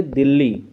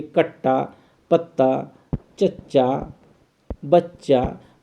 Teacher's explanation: जब दो समान व्यंजन एक साथ प्रयोग किए जाते हैं तो उन्हें व्यंजन द्वित्व अथवा युग्मक ध्वनियाँ कहते हैं।